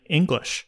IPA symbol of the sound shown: ŋ